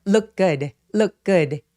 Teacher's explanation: 그래서 자음이 이렇게 몰려있는 경우에는 이렇게 첫 번째 단어의 맨 마지막에 오는 트 발음을 없애버리고 그냥 현재 동사처럼 look good, look good 이라고 표현할 수 있어요